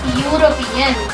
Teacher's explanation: the word European is beginning with the vowel letter E, but the sound which is produced here is ya. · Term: consonantal sound